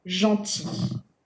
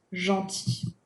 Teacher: We do pronounce the y sound when it is feminine, gentille, gentille, but we do not pronounce the L when it is in its masculine form